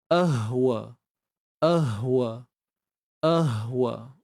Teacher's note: berada pada kedudukan makhraj yang Samalah iaitu pada bahagian pangkal kerongkong jadi hati-hati juga pastikan bunyinya terpisah a Hamzah Hamzah ha ha